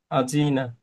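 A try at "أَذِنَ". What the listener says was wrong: এই জিমটা একটু শক্ত হয়ে, এই দালটা শক্ত হয়ে গেছে, নরম হবে। উম, জালের মাখাসটা ভাই জিহুবার আগা সামনে দুই দাঁতের আগা লাগবে। স্পষ্ট হবে জাল।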